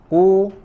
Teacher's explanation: Kemudian disempurnakan dengan harokat dhammah, ku, manyun, dan suaranya menggema, ya, tebal. Kul, ya, kemudian huruf lam sukunnya tipis, ya.